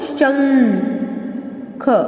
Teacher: इसका जो उच्चारण है वो नासिका से होता है. नासिका मीन्स नाक से होता है. तो इसका उच्चारण हम नासिका द्वारा करते हैं. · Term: अनुस्वार